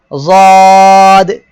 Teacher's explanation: জিহ্বার গোড়ার কিনারা উপরের মাড়ির দাঁতের সঙ্গে লাগিয়ে যদ উচ্চারিত হয়